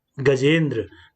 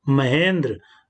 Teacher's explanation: पहले शब्द की अंतिम ध्वनि आ है और दूसरे शब्द की पहली ध्वनि ई है। ह्रस्व या दीर्घ कोई भी हो तो दोनों मिलकर के क्रमशः क्या बन जाते हैं, ए बन जाते हैं। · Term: गुण स्वर संधि